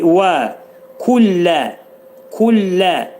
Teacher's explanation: ləm hərfi incə deyilir